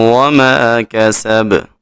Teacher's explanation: سین میں خوب سیٹی پیدا کریں گے